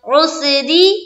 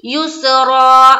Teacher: अब ख्याल रखना है क्या, इन्ना में तो मुशद्दद का गुन्ना होगा और ये रा जो है इसके नीचे क्या है, जेर है, तो ये रा बारीक होगी और युसरा जो पढ़ेंगे ये रा पुर होगी। क्यों, क्योंकि एक जबर हट भी गया है तो एक जबर के साथ अलीफ पढ़ रहे हैं और रा के ऊपर जबर जेर पेश हो या दो जबर हो उस या दो पेश हो, तो उस सूरत में क्या करते हैं, रा को पुर करते हैं, है ना।